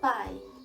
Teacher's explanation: As semivogais, os fonemas entendidos como semitons, sons um pouco mais fracos que os tons, são os fonemas I e U, quando acompanhados de vogais. Na palavra pai, nós temos a presença de uma única vogal, que é a vogal A, e a semivogal I.